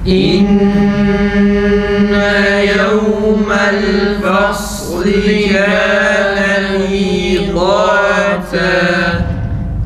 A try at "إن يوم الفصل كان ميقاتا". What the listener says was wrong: Kaf biraz daha düzgün. Miqâta, miqâta.